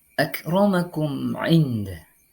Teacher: Cara membacanya yakni dengan membunyikan secara jelas huruf mim sukun dan huruf ain tanpa berdengung. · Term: ilhar syafawi